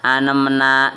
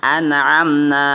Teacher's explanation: Idhar di sini pengertiannya adalah jelas atau terang, tanpa dengung, dan apabila bertemu dengan 6 huruf di bawah ini, yaitu alif, ha, kha, ain, ghin, ha, ketemu dengan yaitu tanwin atau nun mati atau tanwin, maka dibacanya jelas atau terang.